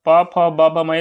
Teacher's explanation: बिना ओठ से जो है बोले बिना ओठ का सटाए आप प बोल नहीं सकते